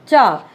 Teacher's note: तालव्य व्यंजन, जैसा कि कंठ से थोड़ा सा ऊपर आ जाएंगे अब हम, है ना। उच्चारण करते समय जीवा अग्र कठोर तालु को स्पर्श करता है